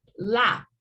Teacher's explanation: Nothing, no vibrations. The p is unvoiced.